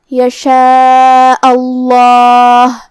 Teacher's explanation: یہاں لفظ الجلالہ کا حکم ہے تفخیم، ہم یہ کلمہ کو موٹی آواز میں پڑھیں گے کیونکہ اس سے پہلے والے حرف پہ حمزہ پہ زبر ہے